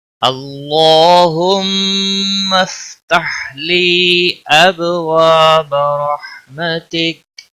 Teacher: اللہ اس میں جلالہ کلام جہاں پر بھی آئے گا وہاں یہ دیکھا جاتا ہے کہ پچھلے حرف کے اوپر اگر زبر یا پیش ہو تو پر پڑا جاتا ہے، اگر زیر ہو تو باریک پڑا جاتا ہے۔ یہاں پر اللہ کے لام کے پچھلے حرف کے اوپر زبر ہے اس لیے موٹا پڑا جائے گا